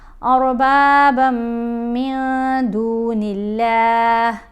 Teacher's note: میم بھی حروف یرملون میں ہے تو با کو میم سے غنہ کرتے ہوئے ملائیں گے · یہاں تنوین کے بعد میم ہے، میم بھی مشدد ہے تو اربابم غنہ کرتے ہوئے ملایا